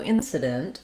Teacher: we stress on the first syllable in. That means I'm going to hold that longer on the vowel I, and it's just like the word in.